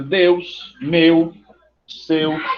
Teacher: ele sai da vogal para a semivogal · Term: ditongo decrescente